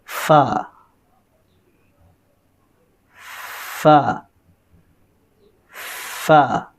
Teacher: ऊपर के दांत और निचले होंठों का अंदरूनी हिस्सा